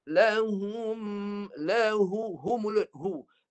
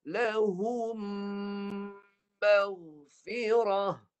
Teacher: lepas hu bibir rapat. Tutup bibir ni. Keluar kat hidung, hidung je. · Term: penuh hidung